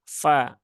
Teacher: Ujung lidahnya bertemu dengan bibir bawah yang bagian dalam ya. Fa, fala. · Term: huruf fa